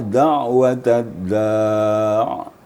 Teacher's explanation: Jangan terlalu panjang ainnya dan juga jangan terlalu pendek ain yang apabila sukun seperti da'watad da' gitu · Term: bain-bain